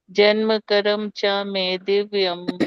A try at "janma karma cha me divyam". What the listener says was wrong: Okay, no karam. Janma karma. Janma karma cha me divyam.